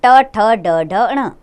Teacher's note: मूर्धा इनका उच्चारण स्थान है और नाम है मूर्धन्य